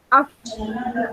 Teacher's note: Fa kan dekat kawasan kita bila sebut fa, af. Bibir bawah bertemu dengan di atas, di hadapan atas.